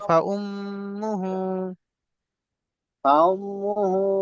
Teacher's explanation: মিমের উপর তাসদীদ রয়েছে, এখানে গুণনা করা ওয়াজিব।